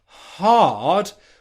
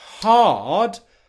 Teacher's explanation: the English H sound, which is hard, where the voicing only turns on as you're making the vowel sound, hard, what we've got here is voicing in the throat before she makes it.